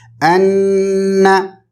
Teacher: انا میں تجدید یہ ہے کہ نون کے اوپر اگر تشدید ہے یا شدہ ہے تو ہم اس کو غنہ کریں گے، مطلب نون کی آواز کو ناک میں روکیں گے، ہولڈ کریں گے